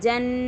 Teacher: نون پر تشدید ہے تو غنہ ہوگا، آواز کو تھوڑی دیر روکیں گے